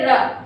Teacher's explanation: उसी तरीके से हमारा रा, जब आप रा बोलते हैं तो वो किससे बोला जाता है, दंतमूल और मसूड़ा। दंतमूल और मसूड़ा के बीच वाले हिस्से को रा जब बोलते हैं तो स्पर्श करता है। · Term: वर्तस्य व्यंजन